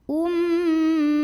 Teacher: Cara bacanya dengung, bunyi M-nya tahan kurang lebih 2 harokat. Ummaha. Ha mad tabi'i karena ada baris fathah tegak di atas huruf H.